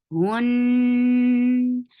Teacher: Attach with noon will get sifa of kunna. Keep the sound in your nose for a longer time. But when you are pronouncing ha, your lips should be should be circled. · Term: gunna